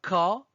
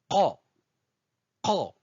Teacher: Je bloque l'air au niveau de la gorge et je libère brusquement · Elle se prononce au niveau du fond de la bouche, en haut de la gorge. C'est la racine de la langue qui vient toucher le palais mou pour bloquer le passage de l'air et pour le libérer ensuite brusquement.